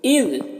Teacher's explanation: ज़ाल में कलकला ना होने पाए, इसको ख्याल रखना है, और ज़ाल को बारीक पढ़ना है।